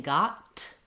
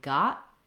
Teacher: not saying got with a burst of air i'm saying got stopping the t not letting any air out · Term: stop t